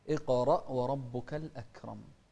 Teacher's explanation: يعني الأكرم، هذه الكلمة كثير من الناس يخطئ فيها فيقول الأكرم، لا، اقرأ وربك الأكرم. الأكرم همس في الكاف، والكاف من أحرف الهمس